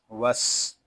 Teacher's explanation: سین حروف سویریہ میں سے ہے، اس میں سیٹی کی آواز آئے گی۔